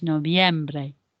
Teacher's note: It's got that V in, that is more of a B sound in Spanish